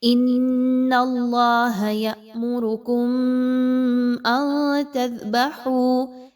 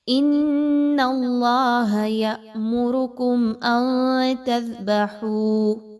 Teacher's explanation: میم ساکن کے بعد حمزہ کا حرف آ جانا یہاں پر اظہار شفوی ہوگا، کسی طرح کا میم پر غنہ نہیں کرنا